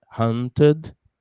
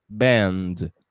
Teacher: Hunt with schwa and band with a D.